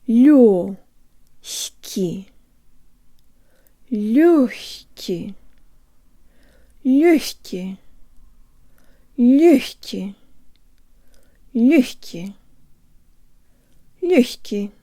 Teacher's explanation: This is one of the few words where g is pronounced ha, with the tongue as high as possible as it rises to pronounce the next syllable. Not h, but h.